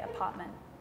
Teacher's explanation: you don't really pronounce the t's